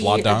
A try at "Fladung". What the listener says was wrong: Floodung? I think it's Fladung, not Flooding.